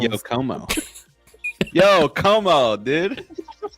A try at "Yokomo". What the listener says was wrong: It's one word.